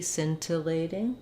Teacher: I would probably say it with a true T